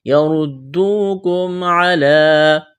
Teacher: یردوکم علی، یردوکم، را کو موٹا کرنا ہے، واو مدہ ہے، میم ساکن کے بعد عین ہے، اظہار کریں گے